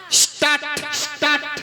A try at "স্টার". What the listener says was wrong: স্টার্ট নয় মাসি, বলো স্টার স্টার।